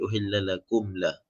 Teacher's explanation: Dia tak panjang, tak dengung, jelas mim. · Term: izhar syafawi